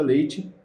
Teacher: Então, o que significa? Ela cai, ela vai da vogal mais forte para a vogal menos forte. Então, ela cai na sua pronúncia, a tonicidade de sua pronúncia nesse ditongo, nesse caso. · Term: ditongo decrescente